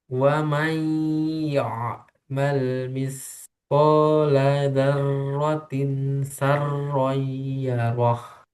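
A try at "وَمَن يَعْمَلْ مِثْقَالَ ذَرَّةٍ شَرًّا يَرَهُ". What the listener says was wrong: Nah, yang terakhir masih sa. Seroy, sya. Nah, kalau di sendiri betul ya, syaroi. Tapi ketika digabung, darrotin sa berubah ke sin.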